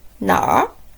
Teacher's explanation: when you pronounce nar, you just start with na and quickly roll the tip of your tongue a bit